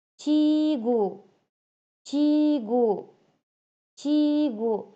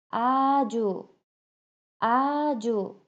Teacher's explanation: Bu harfi soʻz boshida kelganda cha deb o'qiladi. Ikkita harfni, ikkita unlikni oʻrtasida kelsa esa ja deb talaffuz qilinadi.